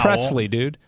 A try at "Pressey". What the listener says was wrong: There's no L in there. There's no L in there. Pressey. Pressey.